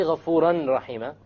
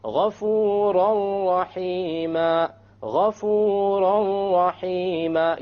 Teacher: You say ghafuran rahima, ghafuran rahima. You don't hear an N sound because you drop it. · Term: idgham without gunna